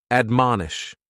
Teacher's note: admonish has 3 syllables, and the stress is on that second syllable, mon